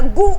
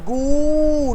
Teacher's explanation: इसको भी कम समय दिया, गु, झटके से गु। इसको हमने बोला गू, लंबा खींचो।